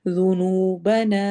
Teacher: ذال کو نرمی سے پڑھنا ہے، واو پہ واو مدہ ہوگی